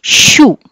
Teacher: అదే మళ్ళీ మీరు షూ అన్నప్పుడు నాలిక ఇంకొంచెం వెనక్కి వెళ్తుంది. So tongue touches just behind the alveolar ridge. Alveolar రిడ్జ్ని కాదు, పళ్ళని కాదు టచ్ చేసేది, పళ్ళని కాకుండా ఇంకొంచెం వెనక్కి వెళ్తుంది. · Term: పోస్ట్ ఆల్వియోలర్